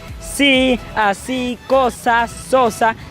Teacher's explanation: La lengua queda en la raíz de los dientes al momento de decir sí, así, cosa, sosa. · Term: Alveolares